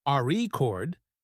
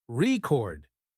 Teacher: if you stress the first syllable re chord it's a noun but if you stress the second syllable record it's a verb